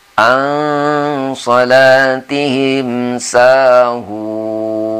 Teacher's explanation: Itulah maksudnya dengan ikhfa. Jadi bunyinya tidak jelas N-nya itu, samar-samar.